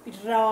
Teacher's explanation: र है आपका मूर्धा की तरह बोला जाएगा